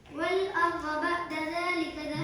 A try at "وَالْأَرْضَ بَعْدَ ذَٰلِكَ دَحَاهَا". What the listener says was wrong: بعد نہیں ہے، بعد ذلك.